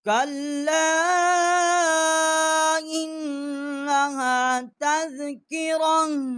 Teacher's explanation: کَلَّا إِنَّهَا تَذْكِرَةٌ، کاف جو ہے چھوٹا کاف ہے، لام کے ساتھ مشدد کیا ہے اور اس کے اوپر چھوٹی مد ہے، 3 الف جتنا آواز بلند کی ہے. حمزہ جو ہے اس کو نون کے ساتھ مشدد کیا ہے، یہاں غنہ نہیں کیا، آگے حروف حل کی ہے.